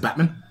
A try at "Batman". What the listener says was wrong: no, you don't pronounce the T. Batman.